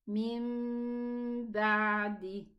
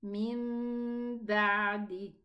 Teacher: It's going to be pronounced a mim with a ghunna. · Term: qalb